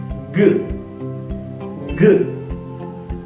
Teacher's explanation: When we articulate this sound, our back of the tongue will lift to soft palate of our mouth. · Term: velar sound